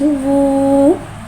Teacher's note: वाव को एक अलिफ यानी 3 हरकत के बराबर खींच के पढ़ेंगे। वाव को टोकी गुलाई के साथ अदा करके पढ़ेंगे। वाव के ऊपर पेश को टोकी गुलाई के साथ अदा करके पढ़ेंगे।